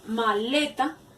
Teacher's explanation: maleta lleva la acentuación tónica en le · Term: sílaba tónica